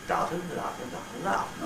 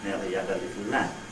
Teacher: Each syllable more or less the same amount of time.